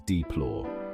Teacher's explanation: We pronounce deplore as deplore with the stress on the second syllable.